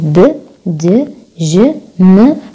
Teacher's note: يعني الأحبال الصوتية بتتحرك لما نحكي هذا الحرف، مثل صوت الب، د، ج، م، هدول voiced sounds